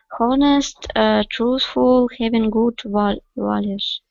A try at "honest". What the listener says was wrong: Honest. H is not pronounced.